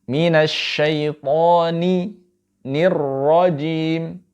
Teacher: ra-nya mufakhamah, tebal karena dia berharakat fathah